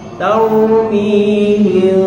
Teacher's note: ra mati sebelum dia baris atas, ra tebal.